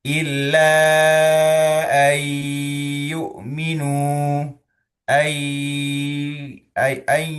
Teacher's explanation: Nempel ke huruf tujuan yaitu huruf ya gitu kan ya. Kalau misalkan kasusnya ayyukminu dan kita perlama dan juga suara masuk hidung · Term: idgham bighunah